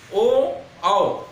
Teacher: कंठ और ओठ दोनों आते हैं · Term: कंठोष्ठ